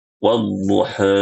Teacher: pengucapan huruf antara harokat fathah dan imalah, ya, disebut dengan imalah sughra. Ya, dibaca dengan wadduha, wadduha. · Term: at-taqlil